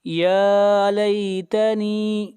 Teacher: یا کے اوپر کھڑی زبر ہے، یا کو کھینچ کر پڑھیں گے 1 الف کے برابر. یا لیتنی نون کو کھینچ کر پڑھیں گے، یہاں پر یا مدہ ہے.